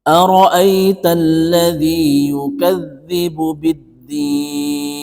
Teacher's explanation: Kebetulan di sini adalah huruf nun, biddin. Huruf nunnya ini dibaca mati karena waqaf, karena berhenti. Maka panjangnya itu kita boleh membaca antara 4 sampai 6 ketukan. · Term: mad arid lis-sukun